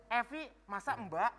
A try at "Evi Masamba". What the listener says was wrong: Bukan dipisah, kata-katanya jangan dipisah. Itu jadi satu. Evi Ma. Samba.